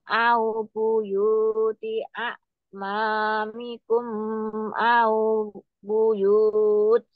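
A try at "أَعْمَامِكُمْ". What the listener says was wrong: Amamikum, jangan kelamaan, tapi dia mengalir saja. Amamikum au buyut. Jangan lupa, setiap kita mengulang itu monyong, mencucu, bibirnya monyong, bibir, huruf bibir. Buyut, buyut.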